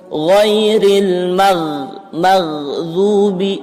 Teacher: Ya, ini sering salah pengucapan huruf ghain. Jadi ghain itu kalaupun diwaqafkan, disukunkan, keluar dia nafasnya. Bukan bukan jadi ghairil magdubi, salah ya, kurang tepat, tapi ghairil maghdubi.